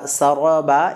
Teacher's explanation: রয় যখন ফাতহা বা জবর হয় র তখন মোটা হয় পুর হয়